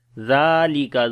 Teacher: zal we read in soft sound and also we long.